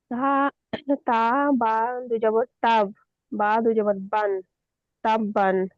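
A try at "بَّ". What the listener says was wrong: দু জবর বলছেন, এক জবর বলতে হবে। তা বা জবর তাব। বা দু জবর বান।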